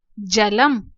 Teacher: जब हमने एक शब्द एक वर्ण से पहले है अंक, का से पहले है, यहाँ पर द से पहले है, लेकिन यहाँ पर बिल्कुल अंत में है। जब शब्द के अंत में ये बिंदी होती है तब हम इसका उच्चारण म के रूप में करते हैं, मकार के रूप में करते हैं, जलम।